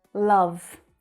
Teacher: love is a stressed word in this sentence. Love. So it's said very clearly.